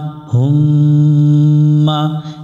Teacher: اللہ আল্লাহ اللہ হু মিলবে মিমের সাথে হুম মা হুম্মা এখানে মিমের উপরে তাসদিদ আছে এটা গুন্না করতে হবে মিমের উপর তাশদিদ এই মিমে গুন্না করা ওয়াজিব যদি এখানে গুন্না